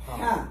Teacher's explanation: Ha is coming from the middle of the throat.